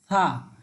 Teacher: এরপরে দেখেন, এই যে তৃতীয় যে হরফ সেটি হচ্ছে থা। সামনের জিহ্বার আগাল দুই দাঁতের আগার সাথে লাগিয়ে একেবারে থা